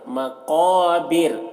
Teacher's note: یہاں پر را کے اوپر جو زبر ہے وہ جزم سے بدل جائے گا، تو رائے ساکنہ سے پہلے زیر ہے تو یہاں پر را کو باریک پڑھیں گے